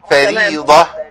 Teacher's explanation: الراء مرققه لانها محركه بالكسر